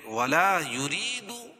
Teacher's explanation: یا ساکن سے پہلے زیر ہے اور را کے نیچے زیر ہے تو را باریک پڑھی جائے گی اور یا مدہ بھی ہوگی